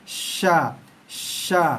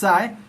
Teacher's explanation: Tengah lidah naik. Tengah lidah dinaikkan sikit. Menghampiri langit. Bahagian tengah langit dalam mulut kita tu.